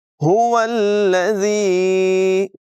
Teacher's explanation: ہا کو حلق کے نچلے حصے سے ادا کریں گے، واؤ کو لام کے ساتھ ملائیں گے۔